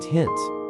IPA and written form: hɪnt (hint)